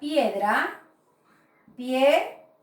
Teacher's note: También tengo una vocal cerrada y una vocal abierta. Por lo tanto, suena en una misma sílaba.